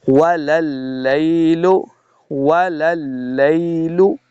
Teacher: لام مشدد ہے، ایک لام کو دوسرے لام کے سامنے لا کے پڑھیں گے